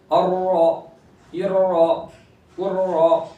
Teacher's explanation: रा पर जबर आएगा तो रा को पूर करेंगे, इससे पहले भी बताया गया है, तो ये तीनों रा पूर होंगे, ठीक है।